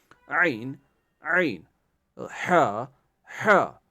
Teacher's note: عین ہا حلق کے درمیانی حصے سے ادا ہوتے ہیں. یعنی جو عین اور ہا ہے یہ حلق کے درمیانی، جو حلق کا بیچ والا حصہ ہے، درمیانی والا حصہ ہے، وہاں سے یہ ادا ہوتے ہیں.